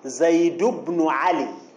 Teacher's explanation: زيد بن علي بلا تنوين، زيد بن علي، التنوين ساقط مع أن الكلمة في حالة الوصل